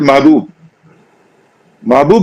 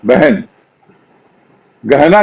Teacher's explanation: ह से पहले तो अ से ए जैसा उच्चारण हो जाता है महबूब महबूब जो है वो महबूब हो जाती है तो महबूब